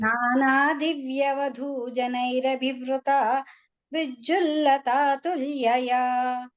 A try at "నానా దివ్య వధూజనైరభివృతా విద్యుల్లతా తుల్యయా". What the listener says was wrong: Okay, ఆ జనైరభివృత అన్నప్పుడు కొంచెం వేగం పెంచేశారు, మళ్ళీ మామూలుగా వస్తున్నారు. అక్కడ ఎందుకు వేగం పెరుగుతుందో అర్థం అవ్వలేదు. ఒకటే పేస్ లో వెళ్ళండి.